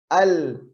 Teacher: Ujung lidah menempel ke langit-langit, bukan ujung lidah. Sisi lidah mulai dari tepi sampai ke depannya nempel ke langit-langit. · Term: inhiraf